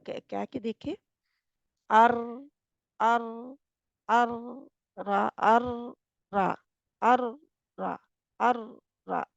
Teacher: जब अर हो रहा होता क्या होता है तकरार सा थोड़ा सा इसमें पाया जाता है